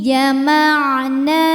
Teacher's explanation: Hukum tajwidnya adalah mad tabi'i muqaddar sebab nun berharokat fathah panjang. Cara bacanya nunnya panjangkan 2 harokat.